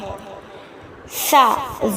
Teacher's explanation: سا زبان کی نوک اور ثنایا علیہ کا سرا، یعنی کہ زبان کی جو نوک ہے وہ ثنایا علیہ یعنی کہ جو اوپر والے 2 دانت ہیں جو تھوڑے سے بڑے ہوتے ہیں، جن سے ہم بائٹ لیتے ہیں، ان کے سرے جہاں سے ہم بائٹ لیتے ہیں وہاں سے ٹکرائے گی تو وہاں سے سا ادا ہوگا۔